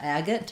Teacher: Agate has the first syllable stress